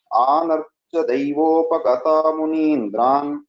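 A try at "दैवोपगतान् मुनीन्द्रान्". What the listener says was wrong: So here Daivopagatan Munindran. This nakara was not heard correctly. Anarcha Daivopagatan Munindran Agnini Vatrin, etc. So the other places it was pronounced well. Only Tan, the nakara was not heard.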